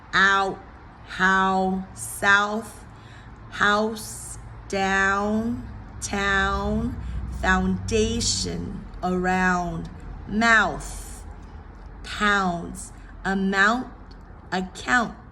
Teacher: the ow, which is a relatively easier vowel to say as a diphthong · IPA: æʊ